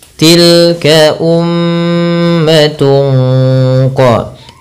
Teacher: Kemudian pada lafal tungqa ini ada bacaan ikhfa hakiki yang dimana suara tanwinnya disamarkan kepada huruf qaf